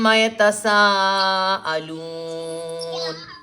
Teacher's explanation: سا سیٹی والا ہے, یاد رکھیں. سواد سیٹی سے نہیں ہوتا, سا سیٹی سے.